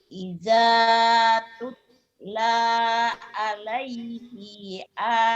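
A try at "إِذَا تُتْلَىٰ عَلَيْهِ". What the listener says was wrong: pendek, alaihi i-nya pendek.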